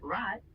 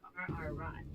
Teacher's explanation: In German, it's often pronounced more guttural, coming from the back of your throat, sort of like gargling. For example, in the word rot, which means red, the R is a bit rougher sounding.